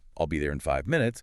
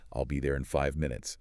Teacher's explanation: The stress falls strongly on five and minutes.